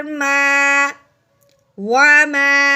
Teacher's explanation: اب ہم نے میم کو الف اور زبر کی وجہ سے ایک الف کے برابر لمبا کرنا ہے